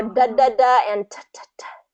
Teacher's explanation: the mouth shape is the same the only difference is the voicing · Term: pairs